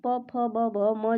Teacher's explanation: प फ ब भ म जो होता है ये आपका ओष्ठ होता है।